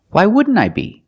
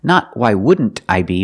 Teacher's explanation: You see the NT in wouldn't is between vowels, so you don't really hear the T.